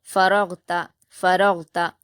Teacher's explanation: حرکت ہے، را پر بھی حرکت ہے، غین پر جزم ہے، را کو غین سے ملا کر بنا قلقلہ کے پڑھیں گے